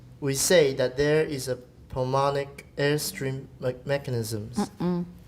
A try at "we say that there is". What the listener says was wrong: Say 没有那么重. 不要念得那么重, 因为 it's not that important a word.